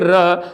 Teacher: जब आप र बोलते हैं तो कंपन होता है। जिह्वा जब बोलेंगे र तो उसमें क्या, जीभ में कंपन होगी। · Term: लुंठित